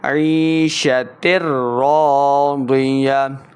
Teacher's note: تر راضیہ، تا کے نیچے 2 زیر کی تنوین، آگے یا را حروف جر ملون سے ہے تو بغیر غنہ کے پڑھنا ہے، ادغام کا قاعدہ.